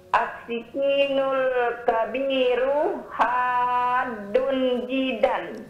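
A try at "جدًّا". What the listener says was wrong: Jiddan. Itu di tasdid dalnya. Jiddan.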